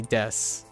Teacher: So when you say desk, if you just ask a American to say how you say this word, desk, they'll say des